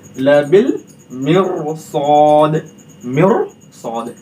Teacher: तो रा को हम पुर करके पढ़ेंगे, मोटा करके पढ़ेंगे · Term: रा पुर